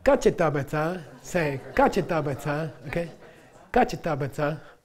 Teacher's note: Kachetabata, all right? High tone, unaspirated, okay?